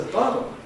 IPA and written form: ˈbɑːɾɫ̩ (bottle)